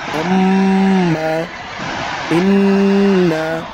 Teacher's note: খেয়াল করবেন 17 নম্বর মাখরাজ, নাকের বাঁশি হইতে গুন্না পড়া হয়। আম্মা, হামজা মিম জবর আম, মিম জবর মা, আম্মা।